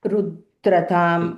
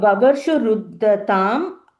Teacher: first you're saying Rudra, it's Ruddha, double dha.